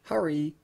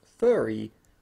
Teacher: hurry uses the same vowel as Murray, that is the strut vowel followed by er, whereas furry uses the nurse vowel